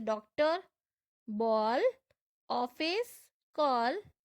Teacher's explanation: ये आ और औ के बीच की ध्वनि होती है। ओ का प्रयोग केवल अंग्रेजी से हिंदी में आए शब्दों में ही होता है, जैसे डॉक्टर, बॉल, ऑफिस, कॉल आदि।